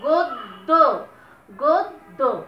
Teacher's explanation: গদ্য, গদ্য, দ দুইবার উচ্চারণ করছো এবং মাঝের যে দটা আছে এইটাতে কিন্তু কোন রকম মানে স্বরধ্বনি সাহায্য নাই। গদ্য, আমরা গো দ দ এইভাবে উচ্চারণ করছি না, যেহেতু নাই স্বরধ্বনি সেহেতু এখানে একটা হস চিহ্ন হবে।